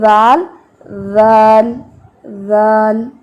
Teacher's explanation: ذال کا جو مخرج ہے وہ زبان کی نوک جب سامنے والے اوپر کے دو دانتوں کے کناروں پر لگے گی تو ذال ادا ہوگا. اب ذال جو ہے اس میں نرمی ہے, ٹھیک ہے.